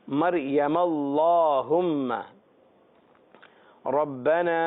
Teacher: اللہم کا جو الف ہے یہ پڑھنے میں نہیں آتا، یوں کہیے کہ گر جاتا ہے.